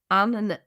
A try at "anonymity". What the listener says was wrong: No, you're adding another "nin" in there.